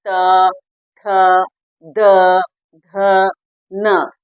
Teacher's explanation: दंतव्य है, जिसमें दांतों को स्पर्श करती हुई जिह्वा निकल रही है। जैसे आप खुद भी बोलिए त, थ, द, ध, न, जिसमें पूरे दांतों का स्पर्श हो रहा है और जिह्वा का स्पर्श हो रहा है, तो वो हमारा जो है दंतव्य हो गया।